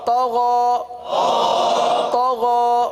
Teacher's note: طا کو پر پڑھیں گے. طا حروف مستعلیہ میں سے ہے.